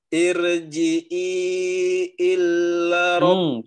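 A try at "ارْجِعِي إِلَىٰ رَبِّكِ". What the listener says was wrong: Irji'i itu hamzah wasal. rabbiki. Ila rabbiki. Ila, jangan illa. Ila.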